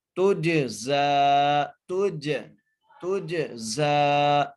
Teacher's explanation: بھی غنہ کریں گے، آگے تا کو جیم سے ملائیں گے، جیم پر قلقلہ کریں گے، زا کو کھینچ کے پڑھیں گے